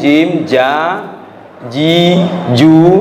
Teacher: jim, ja, ji, ju itu di tengah lidah.